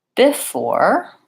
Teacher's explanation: That would be too even across the syllables. I actually say before, where the stress is on the second syllable. So my BE becomes a B. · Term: reduced vowel